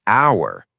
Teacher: when you say hour, you don't say the h sound